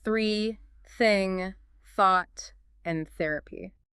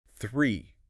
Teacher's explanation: Yeah, no buzz at all. Just a rush of breath. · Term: voiceless the